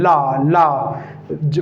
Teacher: पार्श्विक का मतलब जो वायु है वो जीभ के साइड से निकलती है। ला वायु जो है वो जीभ के साइड से, तो इसीलिए उसको बोलते हैं पार्श्विक व्यंजन।